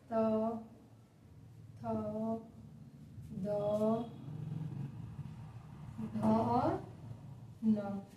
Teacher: जब दांत से टच होता है तो क्या कहते हैं? दंत